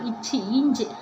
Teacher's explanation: நாவின் இடைப்பகுதி நடு அன்னத்தோட இடைப்பகுதியை பொருந்துறதுனால இச்சு, இஞ்சி பிறக்கு.